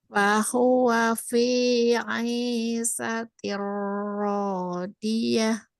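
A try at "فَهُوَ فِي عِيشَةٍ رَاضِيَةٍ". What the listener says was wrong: Fahuwa fi 'ishatir radiyah. Sya-nya berisik sya. Coba syashishu. Nah, ash ash Jadi berisik keluarnya dari tengah lidah ya. Nah, di tengah lidah ke langit-langit. Ash. Sh, sh. Nah, jadi bunyi gitu, jangan sampai bukan, tapi sh, sh, gitu. Fahuwa fi 'ishatir radiyah. Fahuwa fi 'ishatir radiyah. Ya, bunyi sya-nya.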